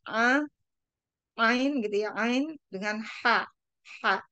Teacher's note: a dan h itu adalah dua huruf yang memang artikulasinya itu dari tenggorokan ya. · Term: faringal